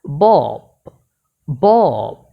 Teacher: যেহেতু এটা শব্দের শেষে আছে তাহলে আমাকে প বলতে হবে, ফ না